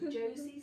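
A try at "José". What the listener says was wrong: J-O-S-E. Josie is J-O-S-I-E, isn't it?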